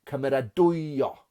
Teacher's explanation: Cymeradwyo, mae'r pwysau ar y goben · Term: disgynedig